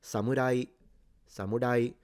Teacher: Some Japanese pronounce the R like a single tip. So it's like the beginning of a roll, but then they don't continue. Other Japanese pronounce it almost like an L.